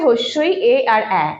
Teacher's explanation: এই 3টে উচ্চারণ করতে গিয়ে কিন্তু আমাদের যে জিভা রয়েছে সেটা কিন্তু সামনের দিকে এগিয়ে আসছে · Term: সম্মুখ স্বরধ্বনি